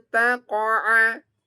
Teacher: Di sini ada nun sukun bertemu ta, maka ini bacaannya ikhfa. Nun sukun atau tanwin bertemu dengan huruf 15, dia bacaannya ikhfa. Artinya dengungnya 4 ditahan